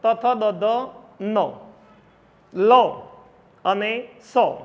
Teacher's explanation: નીચે લખેલું છે ઋ સ્વર, તુ એટલે ત વર્ગ, લ અને સ. આટલા વર્ણો દાંતથી ઉચ્ચારાય છે, માટે એને દંત્ય વર્ણો કહેવામાં આવે છે